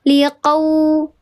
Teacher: Bukan huruf u, tapi di sini jadinya huruf w. Ya, liqau dikeraskan bibirnya. Liqau bukan qau, tapi qau.